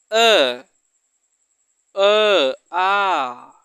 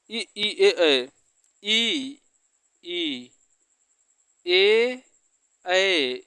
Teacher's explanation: इन सभी को बोलने में आपका ओठ गोल नहीं होता है, जब बल्कि फैल जा रहा है। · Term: अवृत्तमुखी